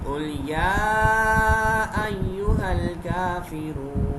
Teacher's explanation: کاف حروف مستعلیہ میں سے ہے. کاف کو موٹا پڑھیں گے، لام باریک ہوگا. یا کو کھینچ کے پڑھیں گے.